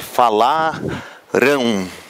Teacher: Então existe um U aqui e esse U ainda é nasal também.